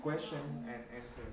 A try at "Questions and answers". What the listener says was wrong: Questions and answers. Remember the S on the end.